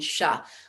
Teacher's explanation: the tip of the tongue moves towards the hard palate just behind the gums which are behind the teeth